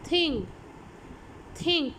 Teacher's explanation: the tongue tip is used either between the teeth और close to the upper teeth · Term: डेंटल